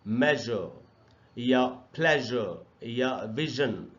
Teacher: ज एक voiced sound है और ज को वैसे ही बोलना चाहिए जैसे हम लोग श बोलते हैं, वैसे ही मुंह के अंदर सिचुएशन करके बोलेंगे ज. और ये एग्जाम्पल्स हैं जैसे इन वर्ड्स में पढ़ेंगे इनको, मेजर या प्लेजर या विजन, तो ज भी एक सिबिलेंट साउंड है.